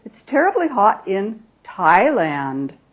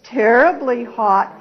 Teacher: I might use Rising falling intonation to Signal my certainty about the fact that it's very hot in Thailand